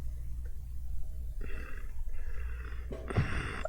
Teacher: This is the voiceless bilabial nasal consonant